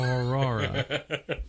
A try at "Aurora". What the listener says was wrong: Aurora. You just say Aurora. The first time you said it, I thought that you like got stuck. Like you said the first syllables of something and then just gave up.